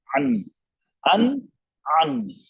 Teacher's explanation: epiglottis को पीछे push कर रहे हैं, पीछे की तरफ धक्का दे रहे हैं, गले को तंग कर रहे हैं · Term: आइन